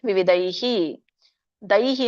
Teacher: ಐ ಬತ್ತಿರೋದರಿಂದ ಈ ಒಂದು ವಿಸರ್ಗ ಕೂಡ ಐಹಿ ಅಂತ ಬರುತ್ತೆ